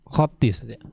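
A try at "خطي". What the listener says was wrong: Khatti, na'am. Khattika itu ada tasydidnya.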